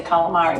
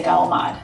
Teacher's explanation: dropping the final vowel sounds of a word is a very Italian American thing to do